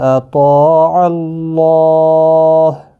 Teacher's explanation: اللہ کا لام اس زبر کی وجہ سے پر پڑھا جائے گا، ہا ساکن پڑھا جائے گا، وقف کی صورت میں، ملانے کی صورت میں اپنی حرکت کے ساتھ پڑھا جائے گا۔